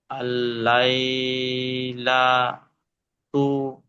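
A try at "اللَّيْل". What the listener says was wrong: আল্লাহ লা কেন বলছেন? আল লাইয়াক।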